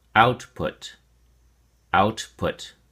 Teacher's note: Output has two syllables, and the emphasis or stress is on the first syllable, out.